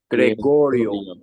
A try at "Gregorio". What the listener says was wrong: Excelente.